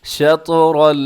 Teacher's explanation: طا موٹا را بھی موٹا اور طا ساتھ قلقلہ بھی کرنا ہے